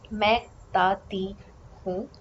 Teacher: The T that you see in the script here is the dental T. Dental, the tip of the tongue is right on the teeth.